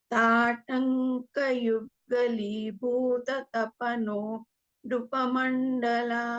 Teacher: Remember, Bha is a Mahaprana here.